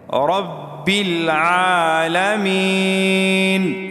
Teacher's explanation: وقف کرنے کی وجہ سے نون کو ہم ساکن کریں گے، رب العالمین، اس طرح۔